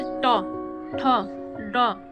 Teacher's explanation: मूर्धन्य व्यंजन देखेंगे, जबकि जिह्वा की उल्टी हुई नोक का निचला भाग मूर्धा से स्पर्श करता है, ऐसी स्थिति में उत्पन्न स्वर को मूर्धन्य व्यंजन कहते हैं।